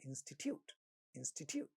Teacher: Institute, the first syllable is stressed. Third syllable has a ta sound in the beginning of the syllable, but it is not getting aspirated because this is not a stressed syllable.